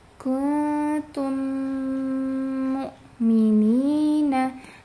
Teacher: huruf mimnya itu harus dipanjangkan dulu gunanya · Kuntum mu'minina ya, belum durasinya belum panjang, karena mim sukun bertemu dengan mim yang tasydid itu gunahnya itu paling tinggi ya.